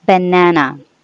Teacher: the first and last syllable has no definite vowel sound unlike the middle symbol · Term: schwa, schwa sound